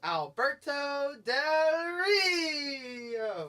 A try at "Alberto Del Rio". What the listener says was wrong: See, you need to roll the R's. Alberto Del Rio. That's how you do it.